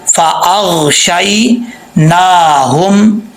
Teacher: نون کے اوپر کھڑا زبر ہے، ایک الف کی مقدار اس کو لمبا کریں گے · شین زبر یا شی ہوتا ہے، شائع نہیں ہوتا